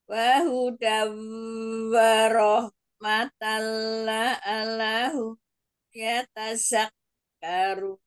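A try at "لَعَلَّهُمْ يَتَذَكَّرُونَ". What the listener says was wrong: Lam tasdidnya yang la'allahum la'allahum.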